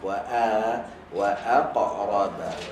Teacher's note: Sama juga hamzah dengan qaf. Qaf tebal, hamzah nipis. Senyumkan hamzah, tebalkan qaf.